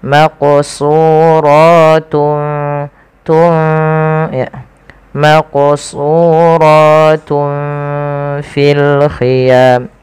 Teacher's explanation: Nah, ikhfa di tengah-tengahnya. Jadi nunnya tidak terlalu dibaca dengan jelas, tapi dia disamarkan kepada huruf selanjutnya. Maka di sini samarkan huruf ta kepada huruf fa langsung.